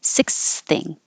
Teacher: if you have another th after it you don't have to take a pause and make two th's just make one th